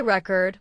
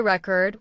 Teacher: If you say record with stress on the first syllable, it's a noun, like a music record. But if you say record with stress on the second syllable, it becomes a verb